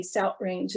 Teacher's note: she would say south range and she had a glottal stop there · people will sometimes substitute that glottal stop or a t for what we call the voiceless th, th, like in the word south.